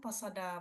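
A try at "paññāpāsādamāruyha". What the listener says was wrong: This is pasad. Now these are two words. Now if you say pasada, pasada is another meaning. Pasada means trust. Pasada means cover, maybe a wall. So panya pasada.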